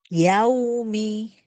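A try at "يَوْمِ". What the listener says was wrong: Jangan lebar. Yaumi. Oh, bukan. Yaumi.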